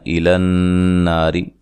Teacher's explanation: او واو مدہ ہے, نون کو لمبا نہیں کرنا. ایلن ناری نون مشدد پہ غنہ ضروری ہے. نا الف مدہ ہے, را کو باریک پڑھنا ہے.